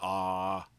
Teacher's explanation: And then a there's not really any constriction at all. Big open sound.